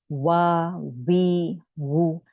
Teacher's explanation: इसमें आपने नोटिस किया इनकी फा में आपके ऊपर के दांत आपके होंठ को, नीचे वाले होंठ को लगते हैं, मगर वाव में नहीं लगते। वाव में आपके होंठ गोल रहेंगे